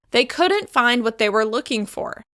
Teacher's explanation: I'm stressing the negative in order to make my meaning extra clear. They couldn't find what they were looking for.